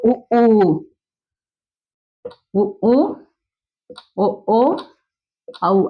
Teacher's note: வாயை திறக்கும் முயற்சியுடன் இதழ்களை குவிப்பதால் வாய் திறக்கும், அப்புறம் இதழ் குவியும்.